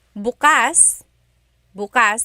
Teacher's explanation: If you say bukas, bukas, the emphasis is on the second syllable, that means open.